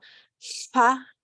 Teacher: you're going to put your tongue behind your teeth, and then you're going to blow air on either side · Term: L with the squiggle